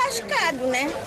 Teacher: Esse S meio misturado com X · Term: chiado